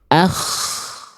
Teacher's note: K itu dia dilafalkan dari tenggorokan paling atas ya atau bagian terluar dari tenggorokan kita